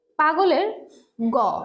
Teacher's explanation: গটা হচ্ছে ঘোষ অল্পপ্রাণ